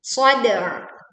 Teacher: Leburkan alif lam ke sad sehingga kita langsung menekan di huruf sad.